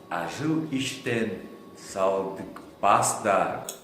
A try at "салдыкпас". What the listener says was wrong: произносит как салдыкпас. Салдыкпас. К передняя взрывная К. А надо задняя.